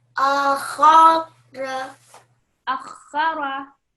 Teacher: Bit more emphasis on the kha. Really make it a hardened letter when you're joining the alif.